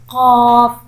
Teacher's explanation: قاف جو ہے موٹے حروف میں سے بھی ہے، اس کو ہم پر کر کے پڑھتے ہیں، اور جب ہماری زبان کی جڑ کوے کے قریب نرم تالو سے لگتی ہے تو پھر قاف ادا ہوتا ہے، قاف۔